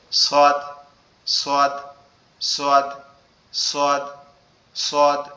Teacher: সোয়াদ অক্ষরটা আমাদের জিহ্বার আগা, সামনের নিচের দুই দাঁতের আগার সঙ্গে লাগবে, লেগে উচ্চারিত হবে সোয়াদ, সোয়াদ, সোয়াদ, সোয়াদ, সোয়াদ, এরকম ভাবে উচ্চারিত হবে।